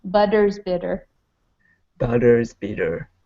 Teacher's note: it is a D sound but I Need A Little Bit Stronger D sound in the middle